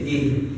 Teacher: Jadi ih ada hamas. Mengeluarkan nafas.